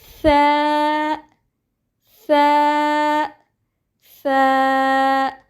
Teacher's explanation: The voice of Tha is very soft. It has an airflow. Take out the tip of your tongue